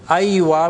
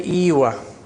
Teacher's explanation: Most Arabs use Aywa with Fatha. But in the countryside, especially in Egypt, they say Iwa.